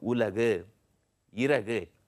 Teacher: இதை தனியாக நீங்கள் உச்சரிக்கும் போது கு அப்படிங்கிற அந்த ஒலி ரொம்ப முழுமையாக உங்களுக்கு கேட்கும். ஆனால் இதே கு அப்படிங்கிற அந்த எழுத்து இப்போ உலகு, இறகு அப்படின்னு வரும்போது அந்த எழுத்து கொஞ்சம் குறுகி ஒலிக்கிறத நீங்க பார்க்கலாம். ஆக இந்த கு அப்படிங்கிற எழுத்து ஊல அப்படிங்கிற அந்த எழுத்துக்கள் வரும்பொழுது கொஞ்சம் குறுகி ஒலிக்கிறதுனால அதற்கு குற்றிய லுகரம் அப்படின்னு பேரு.